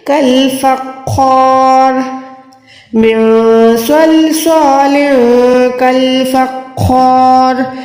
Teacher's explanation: فا کو خو کے ساتھ ملائیں, خو کو لمبا کریں, خو موٹا بھی ہے, الف کے ساتھ ہے, اس لیے ہم ایک سیکنڈ کھینچ رہے ہیں. را پہ زیر ہے تو را باریک تو ہے, لیکن یہاں پر ہم را کو ساکن کر دیں گے کیونکہ ہم یہاں پر سٹاپ کر رہے ہیں.